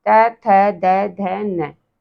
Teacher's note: फिर आता है हमारा तवर्ग, त, थ, द, ध, न, ये कहाँ से बोले जाते हैं, दंत, दांतों से बोले जाते हैं